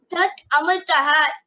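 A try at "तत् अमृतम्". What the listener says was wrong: There is no visarga at the end. There is an anuswara at the end, which means it is amritam. Amritam.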